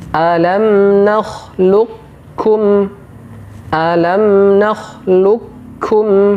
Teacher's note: Huruf qaf dimasukkan secara sempurna ke huruf kaf. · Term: Idgham mutaqaribain